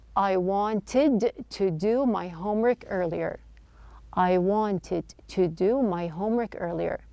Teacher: the T sound in the word wanted the tea is dropped this is not an uncommon practice when the tea follows an